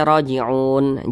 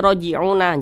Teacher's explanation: Jangan dibaca raji'una, jangan, tapi kita matikan huruf nunnya.